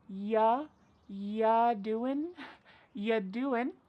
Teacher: we're going to start this question with just you, which is reduced to y